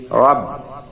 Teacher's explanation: রয়ে জবর এবং পেশ থাকলে রয়ের উচ্চারণ পোর মোটা হয়